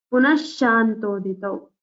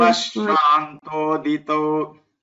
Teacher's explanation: It's little stress on sha here. Visarga is before the sha.